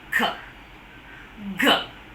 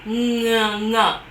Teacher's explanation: the production of the speech sounds with the articulators coming in full contact and the soft palate lowered, so the air from the lungs come out through the nose there. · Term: nasal sound